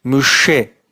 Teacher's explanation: Şin harfi Ağzımızın orta noktasından dama yakın yerden